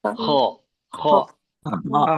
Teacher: Kho itu di ujung tenggorokan atas.